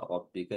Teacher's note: rnya dibaca tafkhim dibaca tebal